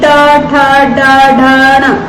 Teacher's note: ये आते हैं मूर्धन्य में